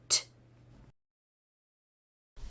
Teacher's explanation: you push air out as your tongue pushes then Falls away your voice is turned off